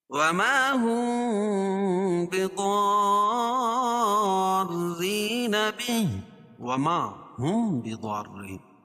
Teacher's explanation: میم ساکن کے بعد با آئے تو اخفاء شفوی ہوتا ہے، یعنی اس میں اخفاء اور غنہ کر کے پڑھیں گے۔ بضارین، اور یہاں مد لازم کلم مثقل ہے۔